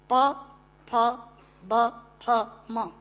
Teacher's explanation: दोनों होंठ मिलाकर बोले जा सकते हैं। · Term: ओष्ठांग